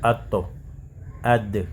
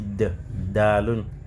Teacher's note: Quand tu dis de, dalun, même enjeu, la langue prend l'appui en haut. Et plus précisément au niveau de la racine des incisives.